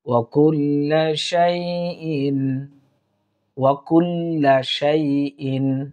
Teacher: এরপর দেখুন, ওয়া কুল্লা শাইইন, ওয়া কুল্লা শাইইন, শাইইন ইজহার, এখানে কোনো আমরা গুন্না করব না